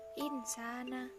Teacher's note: ikfa karena nun sukun bertemu dengan huruf shin dan cara membacanya samar-samar